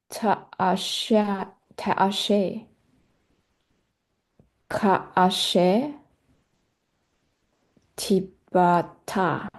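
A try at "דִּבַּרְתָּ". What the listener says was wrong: It sounds like all the Dalits are T's. What's happening there? Can I hear you say Dibauta? I noticed that a lot of these Dalits, like this one too, were pronounced as T.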